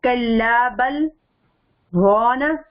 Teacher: آواز بند ہو جائے لیکن سانس نہیں ٹوٹے، یہ چیز ذہن میں رکھنی ہے. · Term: سکتہ